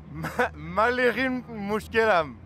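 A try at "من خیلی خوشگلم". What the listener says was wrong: Na, mushkel na, khoshkel. Man kheli khoshkelam.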